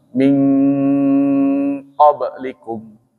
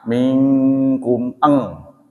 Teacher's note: Ada ikhfa ab'ad. Nah, nun mati bertemu dengan qaf dan kaf, itu jelas kata-katanya eng